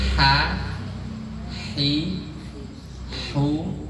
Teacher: Hak itu letaknya di tenggorokan bagian tengah. Jadi ada desahannya. Kayak orang kepedesan ya.